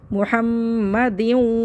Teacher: میم مشدد پہ غنہ کریں گے. محمدیوں ہونٹ گول کرنا ہے.